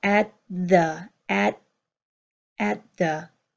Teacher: Finally, with at and the T pulls together from the end of at and the beginning of the, and we hear at the, at the.